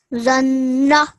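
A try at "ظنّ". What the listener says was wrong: Okay, just a tiny bit of tweaking. It's a zo. Okay, so it's a slightly thicker, heavier sound. Zanna.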